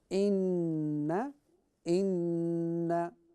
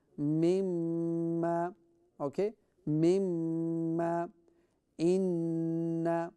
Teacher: Anytime we see a tashdeed sign, a shadda sign, a W sign on noon or meem, okay, we will read it with ghunna, which will be through the nose. So it will become inna, inna.